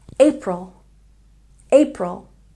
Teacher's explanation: April has a stress on the first syllable.